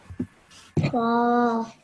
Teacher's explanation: 2 seconds you pronounced that for, which was excellent because of the vertical fatha.